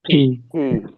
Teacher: পিতে দুই ঠোঁট বন্ধ থাকবে, একটু শক্ত করে বাতাস একটু ধাক্কা দিয়ে বের হবে